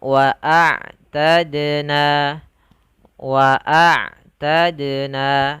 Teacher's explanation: apabila ada huruf dal dia sukun, maka termasuk kepada bacaan qalqalah yang harus dibaca mantul.